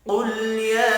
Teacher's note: قل یا، قاف پر پڑھا جائے گا، لام ساکن پر قلقلہ نہیں کرنا، یا کے اوپر چھوٹی مد ہے 3 الف کے برابر کھینچ کر پڑھیں گے